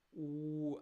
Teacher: So we have u, then the lips are very almost closed, very rounded, but almost closed.